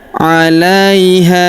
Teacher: huruf ha kita panjangkan empat atau lima harakat karena di depan huruf ha terdapat alif yang di atasnya terdapat tanda garis bacaan panjang empat atau lima harakat.